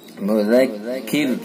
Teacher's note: अगर हम वक्फ करेंगे रुकेंगे तो रा बारिक होगी, चूंकि रा साकिन हो जाएगी